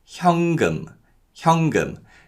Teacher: because of nasalization, the 니은 받침 in 현 is pronounced as an 이응 sound. So it's not 현금, but it's 현금, 현금.